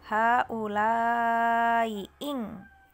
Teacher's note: Tashil itu yang pertama ing gitu kan, i yang pertama diganti tashil menjadi antara mad dan hamzah bacanya, menjadi lanya 4 harokat dulu, haulai ing gitu, lai ing seperti itu.